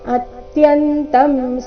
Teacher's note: ಅತ್ಯಂತ ಅನುಸ್ವಾರದ ಉಚ್ಚಾರಣೆ ಮ ರೀತಿ